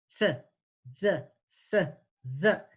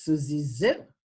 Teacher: the tongue is a little lazy. It's not stretching up to the alveolar ridge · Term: dentalization